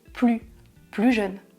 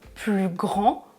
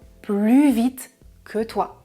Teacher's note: Je ne prononce pas le S du mot plus. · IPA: [ply]